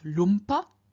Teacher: p is a labial stop, a labial consonant, and therefore the nasal that we find added in front of it is the labial nasal m. So we get lump, and then we add a, and that gives us lumpa.